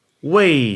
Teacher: wei in the fourth tone